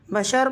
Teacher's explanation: بشرن کے رو پر سے بھی دو پیش کی تنوین حالت وقف میں ختم ہو جائے گی